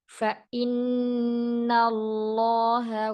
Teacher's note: Kemudian sempurnakan durasi 'nun tasdid', ' gunnah musyaddadah' atau 'gunnah' yang paling sempurna.